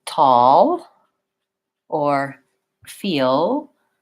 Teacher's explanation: sound so that's basically a schwa sound sounds like aa and I'm making a little bit of a different tongue shape for that l when it's at the end of a word